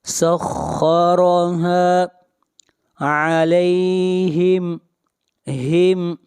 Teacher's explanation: یہاں پر میم کو ظاہر کر کے پڑھیں گے، اس لیے کہ میم ساکن کے بعد نہ میم ہے اور نہ با ہے